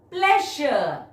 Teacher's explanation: Break it into two syllables. Stress on the first syllable